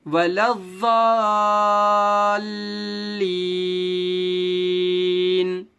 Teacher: الف سے پہلے جب زبر آ گیا تو الف مدہ ہوگا, تھوڑا کھینچ کر پڑھیں گے